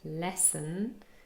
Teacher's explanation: We have a stressed syllable first and then an unstressed syllable next.